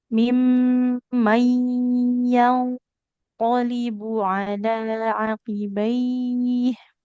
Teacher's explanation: ainnya nggak boleh panjang. Karena fathah nggak ketemu alif.